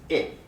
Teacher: I is a vowel sound, but it's a close vowel because the tongue is raised towards the top of the mouth